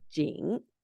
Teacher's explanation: In final position, it has a low falling rising contour. And here's the citation form, which is also low falling rising.